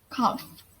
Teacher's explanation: labiodental which is already articulated by the lower lip against the upper teeth